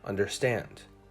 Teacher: stress still rules in english stress is indicated primarily with length in the word understand the last syllable was held for longer · In the word understand, the last syllable is held for longer, understand.